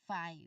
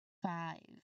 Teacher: You must be able to feel your bottom lip uh you know vibrate strongly when you get to the V sound at the end of the word. And of course this vibration it just proves that your voice is actively turned on.